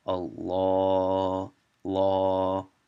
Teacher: It's not law. The only time the L is thick in the Quran is when you say the name of Allah